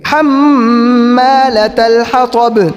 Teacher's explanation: پہلے تا ہے اس کو تا پڑھیں گے، پھر تو کو تو پڑھیں گے، اور آخر کے اندر با ہے قلقلہ کریں گے